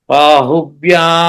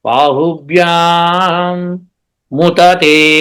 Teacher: వచ్చినప్పుడు దానిలోనే ముతతే కలిసిపోతున్నారు. బాహుభ్యాముతతే అని వచ్చేస్తుంది, కానీ బాహుభ్యాం ముతతే అని రాదు. ఆ గ్యాప్ రాదు.